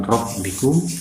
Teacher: Tapi kalau min ini ketemu dengan rabbikum, ini ro dibaca tidak dengung karena ini adalah huruf bila gunnah